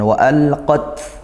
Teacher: Ini lamnya dibaca izhar mutlaq ya, karena dia lam di fi'il gitu, lam fi'il atau lam yang dari kata kerja dalam bahasa Arab. Kemudian tak sukunnya ditekan dulu lagi, kemudian didesiskan